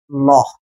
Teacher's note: দেখো এই লটাকে যখন আমরা উচ্চারণ করতে যাচ্ছি ল, তখন ডান এবং বাম এই দুই পাশ দিয়ে একটা বায়ু বের হয়ে আসতেছে, যার কারণে এই লটাকে আমরা পার্শ্বিক বর্ণ নাম দিয়েছি।